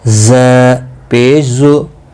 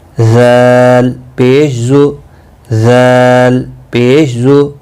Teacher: ز سختی کے ساتھ، ذال نرمی کے ساتھ